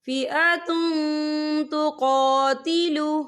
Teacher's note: فئۃ تقاتل، فئۃ، تا پہ تنوین ہے، تنوین کے بعد جو ہے تا آ رہا ہے، اور تا جو ہے اکفا کا ورڈ ہے، تو ہم یہاں اکفا کریں گے، تنوین کی آواز کو ناک میں چھپائیں گے۔